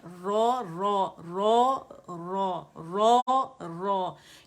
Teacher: رو کو 2 کاؤنٹس کھینچیں گے اور رو فتح کو 1 کاؤنٹ کھینچے گا، اور جبڑا جو ہے وہ موو کرے گا اوپر کی جانب